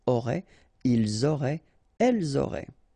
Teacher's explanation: ENT, you don't pronounce it